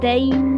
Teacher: Tain itu yang lama, lepas tu mati pada nun.